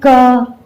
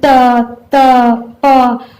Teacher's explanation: इनके उच्चारण में वायु मुख के किसी न किसी भाग से स्पर्श करते हुए निकलती है। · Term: स्पर्श व्यंजन